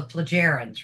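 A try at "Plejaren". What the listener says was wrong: It's pronounced Playaren because the J. Just has that Y.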